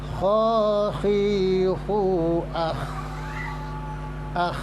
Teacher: Kho ini termasuk huruf rikhwah yang kalau dibunyikan ya dia jalan suaranya.